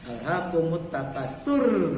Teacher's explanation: Ro-nya dibaca tebal. Tebal sama dengan tafkhim.